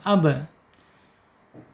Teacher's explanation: Makhraj ba ada di asyafatain ya, yaitu dua bibir sifatnya ada di asyidah ya, tertahannya suara. Kemudian ada di qalqalah, sifat yang tidak berlawanan yakni mantul ketika sukun.